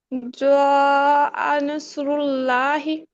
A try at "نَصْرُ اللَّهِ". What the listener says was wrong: بہتر ہے، آگے چلیے.